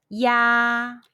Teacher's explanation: When you see the English letter IA in Pinyin, the pronunciation is ya. It's close to the YA in the English word yard, but open the mouth as wide as possible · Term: final ya